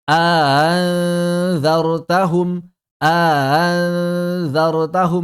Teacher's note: Memasukkan mad di antara hamzah dan hamzah musahalah. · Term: Mad alhajz